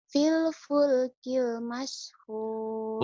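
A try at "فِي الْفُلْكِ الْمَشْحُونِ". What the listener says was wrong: Bukan Bill ya, Phil. Kedengaran sama telinga saya Bill. Mungkin telinga saya yang kurang benar apa bibirmu yang terlalu jontor jadi Bill kedengarannya. Phil ya. Jadi jangan kayak orang kayak saya nih orang Sunda tuh kalau F tuh susah.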